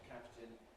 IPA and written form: ˈkæptɪn (captain)